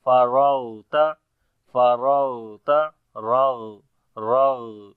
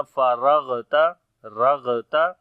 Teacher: سے، اور غین حروف استعلا میں سے ہے اس وجہ سے، اور غین کے اوپر صفت رخاوت ہوگی یعنی کہ آواز جاری ہوگی، نرمی آئے گی